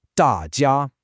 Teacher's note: The tones are fourth tone, then first tone. Da jia. A very frequent error that learners make is they fail to keep that high, flat pitch on the first tone, on jia.